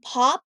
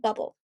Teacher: your lips press together explosively pop open